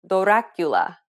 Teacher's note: this very quick transitioning from the d to the r can sometimes allow you to pronounce the rolled r sound